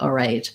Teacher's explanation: sometimes you will hear it more like all right um without that l sound